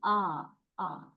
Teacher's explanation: when you say a the tongue lies at the very low position inside the mouth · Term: low vowel